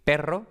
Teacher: la pronunciación normal con dos o tres golpes